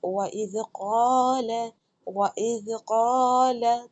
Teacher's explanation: زال پڑھنا ہے تو میری زبان دونوں دانتوں کے درمیان میں آئے گی